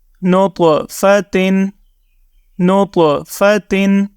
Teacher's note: طا حروف قلقلہ میں شامل ہے، تو اس کو جب آپ پچھلے حرف کے ساتھ ملائیں گے تو آپ نے یاد رکھنا ہے کہ یہاں پر آپ نے قلقلہ کرنا ہے